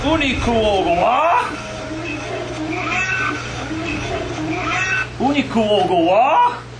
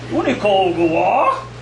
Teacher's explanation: Now notice the query inflection there, the interrogative. Okay, it sounds like a question.